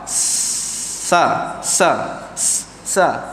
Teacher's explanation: Angin keluar dulu baru suara kan. Sha. Angin dulu.